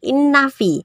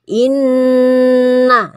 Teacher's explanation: Dari lafaz yang pertama kita lihat ada nun tasdid ya. Ini nun tasdid itu termasuk hurufnya gunnah. Gunnah itu dibaca mendengung. Jadi tidak boleh langsung innafi, tetapi digunakan dulu.